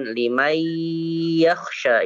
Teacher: kalau misalkan kita tutup hidung kita masih bisa diucapkan limay yakhsha, itu bisa.